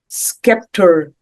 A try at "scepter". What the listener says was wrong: no se scepter the c is not pronounced scepter